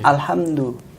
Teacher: Makhrajnya kan dal ini ujung lidah ketemu dengan pangkal dua gigi seri atas. Jangan ke gusinya saja, tapi harus kena ke gigi.